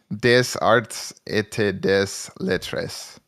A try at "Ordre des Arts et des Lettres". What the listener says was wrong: You're making a huge mistake, and that is pronouncing every letter.